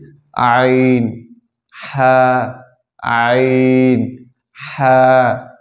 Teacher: 2 নম্বর মাখরাজ হলকের মধ্য হইতে আইন হা